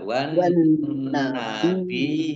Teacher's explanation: Nun tasdid dibaca gunah atau mendengung, ditahan 2 harokat. Kemudian ya tasdid yang didahului dengan kasroh namanya mat tamkin. Ditahan, ya, ditahan 2 harokat juga.